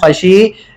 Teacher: خشیہ پہ جب بھی وقف کریں گے تو اس کو ایک الف کی مقدار کھینچ کے پڑھیں گے. وجہ اس کی یہ ہے کیونکہ جب ہم وقف کریں گے خشیہ پر، وقف میں اس کو پڑھیں گے خشی، تو یا ساکن ہو جائے گی. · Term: یا مدہ